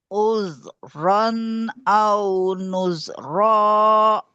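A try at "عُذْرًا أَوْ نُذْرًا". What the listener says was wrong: Yang kedua Z-nya belum pas. Jangan ada Z-Z-nya. Nuz. Nuz.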